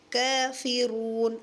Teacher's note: را کو موٹا کریں گے، واو مدہ کا خیال رکھیں گے